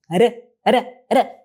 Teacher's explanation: Essa batida rápida é o que a gente chama na fonologia de TEP.